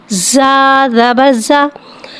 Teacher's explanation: زا کو سیٹی کے ساتھ ظاہر کر کے پڑھیں گے۔